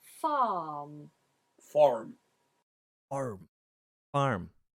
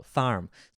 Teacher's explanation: when you're speaking with a west country accent we do pronounce the r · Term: rhotic r